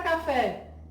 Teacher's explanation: a sílaba tônica da palavra café é a última sílaba da palavra quando isso acontece classificamos essa palavra como uma palavra oxítona começa